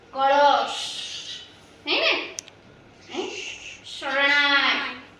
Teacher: શ છે એ લંબાય છે અને તીવ્ર ઉચ્ચાર એનો થાય છે